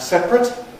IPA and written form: ˈseprət (separate)